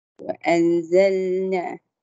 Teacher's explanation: nun mati bertemu zai. Ada dengung. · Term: ikhfa hakiki